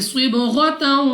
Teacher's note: صاد مستعلیہ میں سے ہے، موٹا پڑھیں گے۔ با قلقلہ میں سے ہے، تو ہمارے مخرج میں جنبش سی ہوگی، یعنی ہمیں اپنی آواز واپس لوٹتی ہوئی سنائی دے گی